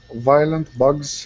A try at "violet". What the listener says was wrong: Okay, so this is violet. So no N right here. Violet.